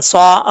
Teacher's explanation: اس کو ایک الف کی مقدار لمبا کریں گے کیونکہ کھڑا زبر ہے۔ یہ کھڑا زبر کھڑی زیر الٹا پیش کو مد اصلی بولتے ہیں، اور ان کی مقدار ایک الف کی مقدار ہوتی ہے۔